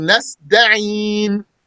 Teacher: Reciting ta like a dal, that's not valid.